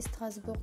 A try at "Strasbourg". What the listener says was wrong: Tu dis Strasbourg? Ah, on dit Strasbourg, on le G, on ne prononce pas en fait. Strasbourg, ah oui, ok.